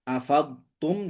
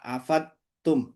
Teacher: Dotnya harus jelas ya, jangan sampai melebur ke huruf ta, afat tum, jangan sampai begitu.